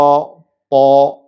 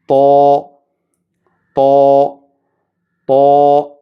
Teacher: ത്വാഇൻ്റെ മഖ്റജ് നാവിൻ്റെ അറ്റവും മേൽ മുൻപല്ലുകളുടെ മുരടും